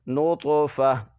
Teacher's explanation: گول تا پر جب وقف کرتے ہیں تو اس کو ہا پڑھا جاتا ہے